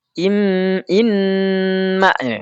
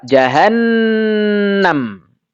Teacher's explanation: Menampakkan itu berarti menjelaskan. Suara nun tasdid, suara mim tasdid ghunahnya harus jelas. Ya. Dan ini berlaku baik wasal ataupun wakaf.